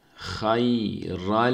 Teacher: burada tenvindeki nun harfini lama çeviriyoruz. Şeddeli lam okuyoruz burada.